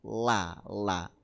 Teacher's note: la li l Nggih Niki la Sisi lidah bagian depan Nggih Sisi lidah bagian depan mengenai gusi gigi depan atas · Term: huruf lam